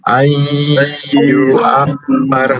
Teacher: Kemudian ada mim bertasydid, jadi ditahan juga